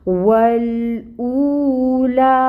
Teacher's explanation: واو مد ایکچولی یہاں پہ ہو رہی ہے، جس کو ہم 2 کاؤنٹس کے برابر لمبا کھینچیں گے، یعنی او کو ہم 2 حرکت لمبا پڑھیں گے۔ · لام کے اوپر کھڑی مد ہے، 2 حرکت لمبا کھینچیں گے لا کو، ٹھیک ہے۔ والأولی، او اور لا دونوں کی مقدار برابر ہوگی، 2 کاؤنٹس